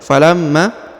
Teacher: contoh berikutnya falamma jaahum biaytina baik perhatikan falam huruf Ma Ya falamma ditahan dan ditekan lalu dipanjangkan dua harakat ya karena terdapat tanda tasdid dan juga di depannya terdapat tanda